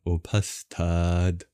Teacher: the TH sound, for example, in upastad. It is not like the English TH sound, but is just a breathy and aspirated T, since Sanskrit differentiates aspirated versus non-aspirated plosives.